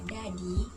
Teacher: bunyi apikodental yaitu bunyi yang dihasilkan oleh keterlibatan ujung lidah dan Gigi atas caranya ujung lidah sebagai artikulator menyentuh gigi atas sebagai titik artikulasi